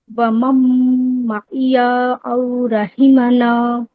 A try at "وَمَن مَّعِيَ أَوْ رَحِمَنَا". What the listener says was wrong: معیا میں یا تھوڑا زیادہ لمبا ہو گیا، ٹھیک ہے، فوراً یا کے بعد او پہ چلے جانا ہے، معیا او رحمنا.